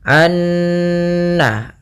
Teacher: kita harus membacanya nunnya masukkan ke Nun kedua dan disertai dengan gunah